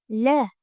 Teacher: hosil boʻlish oʻrniga koʻra til oldi undoshi hosil boʻlish usuliga koʻra, Sirg'aluvchi, ovoz va shovinning ishtirokiga koʻra jarangli undosh. · Tishlar bir-biriga yaqinlashgan, til uchi yuqori tishlar orqasida, havo qisman burundan chiqariladi. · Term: L tovushi